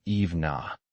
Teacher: The N in even links to I making evna.